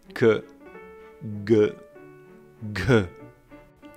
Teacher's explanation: velar, with the back of the tongue on the back of the palate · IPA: [k], [g], [gh]